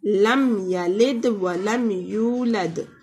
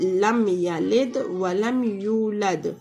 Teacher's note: تو ہم اظہار کریں گے، غنہ نہیں ہوگا اور میم کو ظاہر کر کے پڑھیں گے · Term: اظہار شفائی